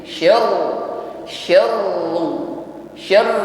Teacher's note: syya berikutnya ditekan pada huruf ro yang bertasydid Syar Syar Syar huruf ro tetap ada takrir ada getaran di ujung lidah dan di sini rnya hukumnya tafkim ditebalkan bunyinya bukan seru tetapi